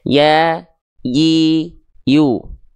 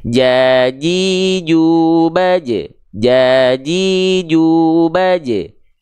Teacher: Nah, kalau tengah lidahnya nempel, yang keluar bukan huruf ya lagi, tapi yang keluar adalah huruf jim.